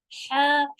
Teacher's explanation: हलक के बीच से पढ़ना है, हा इस तरह से स्ट्रॉन्ग होगा ये